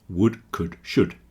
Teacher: all have silent L's, so that would is exactly the same as wood that comes from trees.